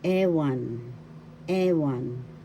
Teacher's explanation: The first syllable has the accent ewan